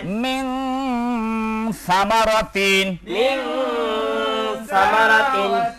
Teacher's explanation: কাফু কাফ কফ ইকফা শব্দের অর্থ হচ্ছে গোপন করা গোপন করা নাকের বাসিতে গোপন করে উচ্চারণ করতে হবে গুন্নার সহিত · অতএব নুন সাকিনকে নাকের বাসিতে গোপন করিয়া গুন্নার সহিত পড়িতে হয়